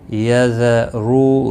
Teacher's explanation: رو واو مدہ ہے، ایک الف کے برابر کھینچ کر پڑھیں گے، رو پیش کی وجہ سے پر پڑا جائے گا